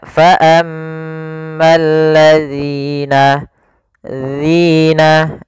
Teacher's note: Agar sempurna dari makhraj dan sifatnya adalah ujung lidah kita tempelkan dengan gigi seri atas, agak kita keluarkan sedikit sehingga berbunyi zi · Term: huruf zal